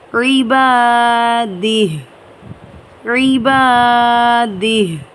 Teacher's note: یہاں پر وقف کرنے کے لیے ہم کھڑا زیر کو ختم کر کے اس ہا کو ہم ساکن کر کے پڑھیں گے. ہا کے جسٹ آواز آئے گی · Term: ہا کو ساکن